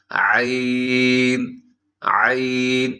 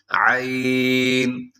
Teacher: گلے سے تھوڑا سا اس کا ساؤنڈ آنا چاہیے، حلق کا درمیانی حصہ وہ اس کا مخرج ہے۔ باریک پڑھا جاتا ہے، اس کو موٹا نہیں پڑھنا.